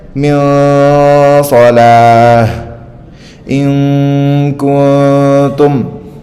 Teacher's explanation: Masih ada dengung sekitar dua harakat · Cara bacanya itu kayak di tengah-tengah gitu, nggak jelas banget kayak izhar, tapi nggak juga full lebur kayak idgham. Masih ada dengung sekitar 2 harokat. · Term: ihfa